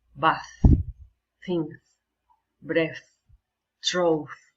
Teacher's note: it's made without any vibration in our vocal cords. We can feel only air.